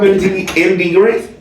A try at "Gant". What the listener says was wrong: Gant. No, Gant. No R. MD Gant.